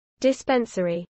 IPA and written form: dɪˈspɛnsəɹi (dispensary)